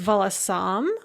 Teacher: The dative plural is волосам, with the stress on the third syllable.